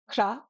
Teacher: we're going to tap that R